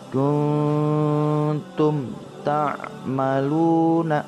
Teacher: mim disuarakan dengan terang dan jelas tanpa berdengung dan mulut tertutup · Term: izhar syafawi